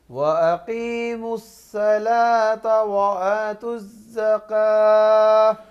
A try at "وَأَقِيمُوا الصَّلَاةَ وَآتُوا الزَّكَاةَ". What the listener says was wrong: احسن.